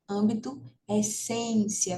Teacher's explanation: se a gente tem o acento circunflexo no a né a gente vai ter um som fechado